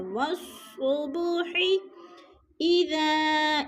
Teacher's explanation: اذا پہ مد منفصل ہے، حروف مدہ کے بعد حمزہ دوسرے کلمے میں آ گیا ہے تو ادھر مد منفصل ہے، یعنی 4 الفی مد ہے، 4 الف کے برابر ہم نے اس کو کھینچ کر پڑھنا ہے۔